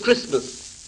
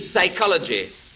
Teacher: the t of christmas and the p of psychology have no place in the spoken language